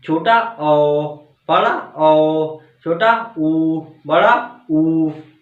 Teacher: वे word जिन्हें बोलते समय हमारे होंठ गोलाकार हो जाते हैं, वृत्ताकार स्वर कहलाते हैं।